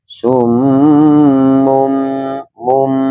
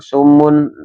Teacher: Jadi nun atau tanwinnya dileburkan menjadi bacaan mim. Kemudian mum ini iqlab.